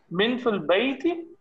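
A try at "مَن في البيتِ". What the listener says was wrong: नहीं मिन नहीं होगा, अगर आपने मिन कहा ना, एक सेकंड, अगर आपने मिन कहा तो इसका मतलब होगा फ्रॉम, आपने जबर लगा के कहना है मन फिल बैती।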